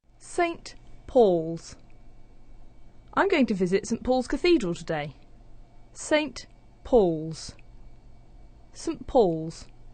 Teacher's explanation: the t sound is disappearing, that's elision. That puts the n sound next to the p, and it starts to sound like a m, so it becomes St.